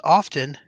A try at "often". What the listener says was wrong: it's often. The T is silent.